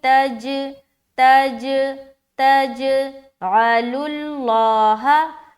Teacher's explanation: اب جیم کے اوپر قلقلہ کریں گے کیونکہ جیم کے اوپر سکون ہے · تو جیم میں قلقلہ، عین کو نکالیں گے واضح طور پر، لام کو لام سے ملاتے ہوئے اس لام کو موٹا کریں گے اور ہا زبر ہا۔